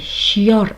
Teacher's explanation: Ya'ni yonma-yon kelgan ikkita unli orasida bitta y orttirib talaffuz qilar edik.